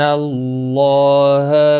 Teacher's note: اللہ کا لام زبر کی وجہ سے پر پڑھا جائے گا